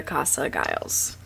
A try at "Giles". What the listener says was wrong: Giles with a G, not Giles. As if it was a J instead of a G.